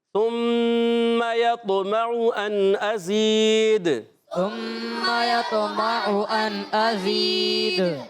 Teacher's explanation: حرف قلقلہ میں سے دال ساکن ہونے کی جگہ آواز لوٹ کر آئے گی, جنبش حرکت ہوگی.